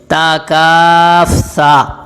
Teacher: تا کا مخرج زبان کی نوک اوپر والے دو دانتوں کی جڑ سے لگے